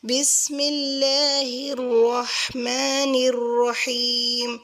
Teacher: اللہ والے نام سے پہلے جب زیر آئے گی تو اس نام کو ہم باریک پڑھیں گے